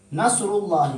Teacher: چونکہ لفظ اللہ سے پہلے را پہ پیش ہے لہذا ہم اس کو موٹا پڑھیں گے